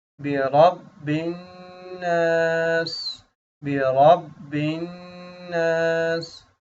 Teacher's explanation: را ہے زبر ہے، را موٹا پڑھیں گے · نون کے اوپر غنہ ہوگا، نون کے اوپر شد ہے